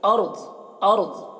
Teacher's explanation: ارض میں را کو پر پڑھیں گے اور ضاد کو بھی پر پڑھیں گے. یہاں پر وقف کریں گے تو ارض ارض اس طرح پڑھیں گے.